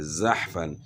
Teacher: حا حروف قلقلہ میں سے نہیں ہے، تو اس لیے اس میں قلقلہ نہیں ہوگا، یعنی ہلا کر نہیں پڑھیں گے